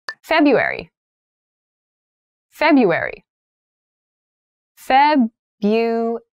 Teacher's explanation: So February has an interesting spelling. That first R isn't really pronounced.